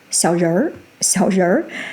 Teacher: adding the retroflex sound at the end